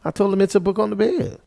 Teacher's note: declarative utterances that end with a rise fall · the rise is captured with a rising pitch accent an l plus h star and the fall is due to a low phrase accent boundary tone combination